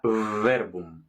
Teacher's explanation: V se llama labio dental porque tocan los dientes superiores contra el labio inferior, igual que la f, pero en lugar de f será verbum.